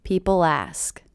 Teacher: I do hear that really linking to the beginning vowel sound